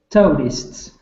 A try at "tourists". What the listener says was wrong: Good. That's difficult to say for most people.